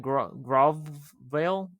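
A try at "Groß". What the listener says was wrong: I think that's pronounced Gross. I think that's that character is generally pronounced with an S type sound.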